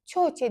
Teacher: T-nı daha incə şəkildə tələffüz edirəm. Çünki əgər samitdən sonra qalın sait gəlirsə, biz avtomatik həmin samiti qalın tələffüz edirik.